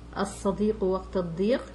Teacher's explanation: I'm sure you're familiar with the lam al-shamsiyya. This is dropped when reading.